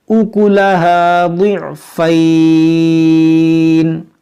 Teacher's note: اس کو ہم پڑھیں گے ضاد عین زیر ضع، فا یا زبر فی، ضعفی نون زیر نی، ضعفینی. یہاں پر جب رکیں گے تو یہاں پر مد لین عارض کریں گے کیونکہ یہاں پر رکنے کی وجہ سے نون پر عارضی سکون آئے گا